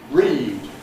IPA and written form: riːd (read)